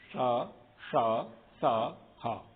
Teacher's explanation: इन 4 वर्ण के समय पर थोड़ा सा रगड़ करके निकलती है हवा, इसलिए गर्म अधिक हो जाती है। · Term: ऊष्म वर्ण